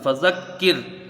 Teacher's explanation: یہاں پر وقف بالسکون مد کوئی نہیں بنے گا اور را کو باریک پڑھا جائے گا